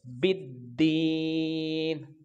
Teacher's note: بعدو. با کو دال کے ساتھ ملائیں گے کیونکہ یہ شمسی حرف ہے, اس کا لام تعریف نہیں پڑھا جائے گا · نون کے اوپر جب وقف کریں گے, رکیں گے, ٹھہریں گے تو نون کے نیچے زیر نہیں پڑیں گے, نون ساکن ہو جائے گا